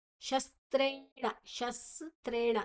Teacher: ಶಸ್ತ್ರೇಣ ಶಸ್ತ್ರೇಣ ಮೂರು ಅಕ್ಷರ ಇದೆ ಸ ತ ಮತ್ತೆ ರೇ ದೀರ್ಘಾಕ್ಷರ ಣ ಣ ಕೂಡ ಮೂರ್ಧನ್ಯ ಣ ನಾಲಿಗೆಯನ್ನ ಮಡಚಿ ಹೇಳಬೇಕಾ